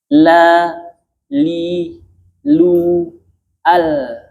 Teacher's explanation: ujung lidah menyentuh pangkal langit-langit atas bagian depan. Berarti lidah tidak ke luar. Jadi jangan la, li, lu, al. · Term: huruf lam